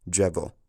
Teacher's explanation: the fricative sound has ended up as a kind of weird almost retroflexed sound